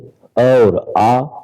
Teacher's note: कंठ से अ और आ का उच्चारण होता है